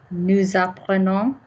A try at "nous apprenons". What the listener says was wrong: Gorgeous and a nice, respectful listening to what the vowel was as well.